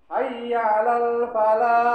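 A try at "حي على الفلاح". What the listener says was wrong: Nah, itu jangan lah. Falah, ha, itu ha.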